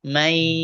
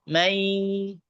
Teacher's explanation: Satu ada dorongan ke hidung karena dengung, yang satu nggak ada. Jadi lemes biasa aja, ringan. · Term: idgham bi guna